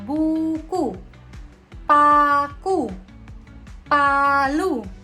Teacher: vokal U tinggi atas belakang dengan kondisi bibir tertutup.